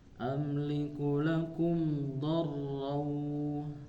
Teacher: Nah, ada 2 tasdid Bu ya, di huruf ro dan huruf waw. Do-nya masuk ke huruf ro, ro-nya masuk ke huruf waw.